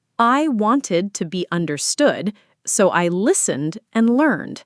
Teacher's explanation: The ed in wanted is a whole extra syllable, but in listened and learned, it's just a d sound. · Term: ed ending